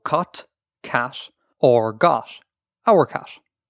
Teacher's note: Basically, voicing voiceless stops and turning voiced stops into nasals. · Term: Eclipsis